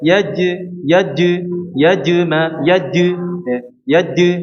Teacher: kedua suaranya menyerupai dengan huruf Dal di sini contohnya yajmauna yajmaunaaj jadi ketika dia mengucapkan huruf Jim ujung lidahnya tersentuh di langit-langit sehingga menjadi huruf Dal